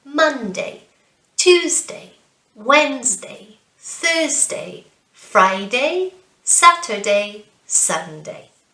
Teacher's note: when saying the days of the week, you want to stress the syllable at the start of the word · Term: syllable stress